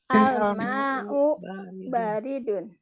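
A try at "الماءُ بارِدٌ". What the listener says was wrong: air itu dingin. Bacanya bukan mau ya. Nah, mau. Al-ma'u, bukan al-ma'u. Al-ma'u.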